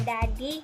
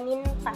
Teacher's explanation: Dan yang ketiga itu adalah bunyi apikodental, yaitu bunyi yang dihasilkan oleh keterlibatan ujung lidah dan gigi atas